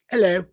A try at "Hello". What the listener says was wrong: Almost an accent. Almost. Yeah, you left the H off.